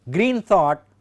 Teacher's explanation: Green thought, both words are stressed, that is spondaic.